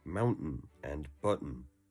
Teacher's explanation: The most common Utah speech mannerism is, of course, dropping T's before N. This results in words like mountain and button to be pronounced mountain and button, like a pause where the T would be.